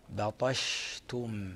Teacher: هذه الشين هي حرف شجري يخرج من وسط اللسان من مائل الحنك الأعلى ، وتتصف بست صفات من بينها التفشي وهو انتشار يحدث داخل